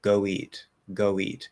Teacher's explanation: o is a little bit more open um a bit more motion to it